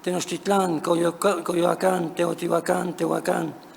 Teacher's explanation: Dichas palabras se volvieron agudas durante el periodo colonial, probablemente por el hecho de que él o los acentos siendo leves, la vocal larga y grave de la última sílaba fue percibida por los españoles como acentual, generando su pronunciación aguda · Un descenso tonal grave matizaba además la pronunciación de la última sílaba. Dichas palabras se volvieron agudas durante el periodo colonial